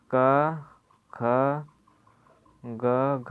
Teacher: जैसे पहले अल्पप्राण, फिर महाप्राण, फिर अल्पप्राण, फिर महाप्राण।